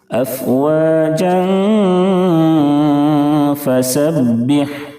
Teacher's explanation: اس کے بعد حروف اخفاء کے 15 حرفوں میں سے فا ہے اس لیے اخفاء حقیقی ہوگا. تنوین کی آواز کو ناک میں چھپا کر غنہ کے ساتھ پڑھیں گے